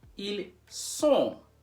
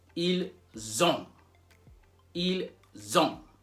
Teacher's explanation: One has an S sound, so être has an S sound, like ils sont. Ils sont. And when it comes to avoir, it has a Z sound.